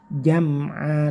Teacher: dengan cara punggung lidahnya atau lidah bagian atas yang bagian tengah itu ditempelkan di langit-langit atas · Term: huruf jim